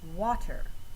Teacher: the wa sound comes out a little heavier than the ter sound when you speak the word. So wa is the stressed syllable in water.